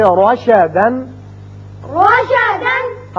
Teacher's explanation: جب بھی را کے اوپر زبر آ جائے تو اس کو ہم پر پڑھیں گے، منہ بھر کے پڑھیں گے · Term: مفخم